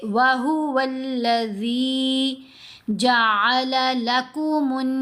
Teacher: नून के ऊपर गुन्ना भी किया, जीम को लंबा भी किया